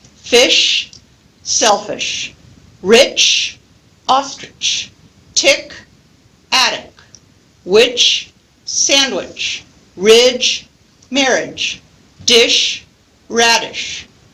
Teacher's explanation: Notice that last syllable in the second column of words is very, very short and contains the unstressed vowel sound. · the full vowel, as in fish, and the unstressed version of it in the unstressed syllable in the word selfish